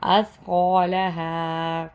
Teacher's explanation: سا ہے، سا کو نرمی سے پڑھنا ہے، قاف موٹا ہے، قاف کو موٹا کر کے پڑھنا ہے